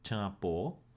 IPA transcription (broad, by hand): tʃa:po: